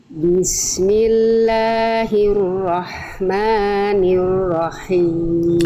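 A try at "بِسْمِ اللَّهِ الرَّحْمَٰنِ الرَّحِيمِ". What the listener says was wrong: Oke. Sip. Bagus. Masyaallah.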